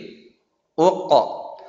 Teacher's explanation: jangan lupa qalqalah ya, huruf qaf tidak boleh ke bawah, bukan uq tapi uq.